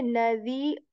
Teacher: I'm also doing idgham, which is like assimilating the sound of the tanween into the next letter of meme, rum. But I'm also staying here on meme and making a nasal sound.